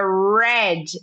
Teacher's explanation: Não tem o I depois do D. Red e não red.